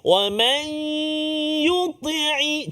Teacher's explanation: Nun mati bertemu dengan ya, iaitulah idgham ma'al ghunnah. Kan, masukkan bunyi nun ke dalam huruf ya beserta dengan dengung